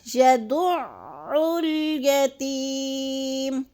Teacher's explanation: اب یتی کو تھوڑا سا لمبا کرنا ہے، یا مدہ ہے · اب عین کو لام سے اس لیے ملا رہے ہیں کہ الف کے اوپر کوئی حرکت نہیں ہے، زبر زیر پیش نہیں ہے، تو ہم نے عین کو لام کے ساتھ ملا لینا ہے